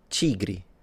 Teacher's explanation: Portuguese, of course, it was the only different one, because instead of a T, it sounded like a ch, but that's once again because it's the Brazilian variety.